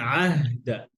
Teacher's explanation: আইন হচ্ছে عين গলার মাঝখান থেকে।